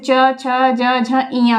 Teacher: च वर्ग के जितने भी होंगे जो है व्यंजन वो सब तालु के अंतर्गत आएंगे